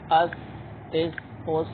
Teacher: سا کی آواز نرم ہوگی اور آواز جاری رہے گی کیونکہ رخوہ ہے